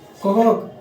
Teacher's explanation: क ख ग पढ़ते हैं तो कंठ का उच्चारण होता है। तो उसी तरह क ख पढ़ेंगे तो कंठ का उच्चारण होगा, यानी क वर्ग।